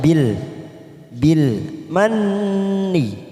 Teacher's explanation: Nun yang bertasdid warna pink namanya bacaan nugunah, kita tekan 3 ketuk.